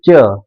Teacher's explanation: च, कम हवा, कम झटका लगेगा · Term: अल्प प्राण